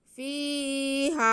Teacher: फ़ा की आवाज़ को हम खींचेंगे। उसके बाद हा पे ज़बर और साथ में अलिफ, तो ये अलिफ मद्दा हो गया। हा की आवाज़ को भी हम खींचेंगे। · फ़ा के नीचे ज़ेर और या साकिन, तो ये या मद्दा हो गई। फ़ा की आवाज़ को हम खींचेंगे। उसके बाद हा पे ज़बर और साथ में अलिफ, तो ये अलिफ मद्दा हो गया।